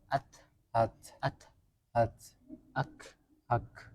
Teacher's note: ketika kaf sama ta sukun masih ada udara keluar suaranya tertahan. Tapi udaranya keluar. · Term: Hames